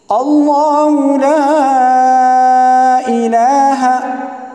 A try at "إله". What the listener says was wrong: الہ میں جو ہا کے اوپر زبر ہے اس کو لمبا نہیں کریں گے، الہ پڑھنا غلط ہے، ٹھیک ہے؟ الہ ہا زبر ہا ہے، ٹھیک ہے؟